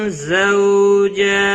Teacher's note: زو واو لین ہے، تھوڑا نرمی کے ساتھ کھینچ کر ادا کریں گے. جیم کے اوپر کھڑی زبر ہے، 1 الف کے برابر کھینچ کر پڑھیں گے.